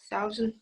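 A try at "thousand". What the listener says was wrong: So in some moments it was heard like 1000, like in German.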